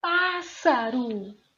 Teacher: Você já está percebendo que a sílaba tônica é pa